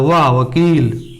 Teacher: दांत और ओष्ठ, वकार आया दंतोष्ठ।